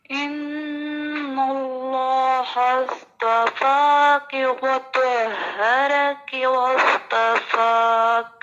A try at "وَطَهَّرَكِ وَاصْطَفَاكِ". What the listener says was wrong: را کو اس طرح ہیوی نہیں کر رہے ہیں آپ جس طرح کرنا ہے. وطہرک واصطفاک. جو حرف موٹا کرنا ہے صرف اسی کو کرنا ہے، دوسرے کو آپ موٹا نہ کریں، ٹھیک ہے.